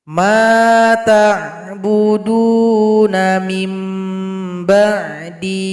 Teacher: durasi panjangnya itu harus satu alif, harus dua harokat atau dua ketukan, tidak boleh lebih.